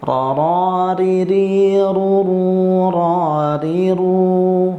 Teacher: maka akan keluar huruf ro Hai sekali lagi huruf Roro ini punya sifat taqrir satu getaran halus jadi harus bergetar tapi tidak boleh terlalu banyak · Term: huruf ra